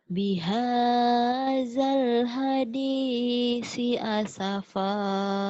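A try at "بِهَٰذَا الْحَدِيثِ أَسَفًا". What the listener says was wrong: Sinya sa ujung lidah. Bihadzal hadisi asafa. Bukan hadisi, hadisi. Sa ini sa ujung lidah. Bihadzal hadisi. Itu masih sin kecil. Ini si. Bihadzal hadisi asafa. Ini sin, ini sa. Bihadzal, zal ini bihadzal.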